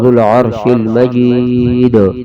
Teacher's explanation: वक़फ़ में दाल पे कलकला होगा